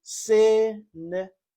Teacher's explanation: three-syllable word with the stress on the first syllable and you say cinnamon.